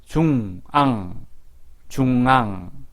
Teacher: 앙은 콧소리, 비음이라고 하죠. 콧소리도 같이 납니다. 콧소리는 콧구멍에서 바람이 나와야 합니다.